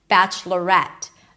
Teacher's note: Here we do pronounce an e sound at the end and that's where the stress lies.